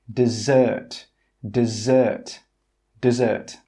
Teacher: 'Dessert' with two Ss is pronounced 'dessert'. The stress on 'dessert' is on the second syllable. That means more energy is placed on the second sound.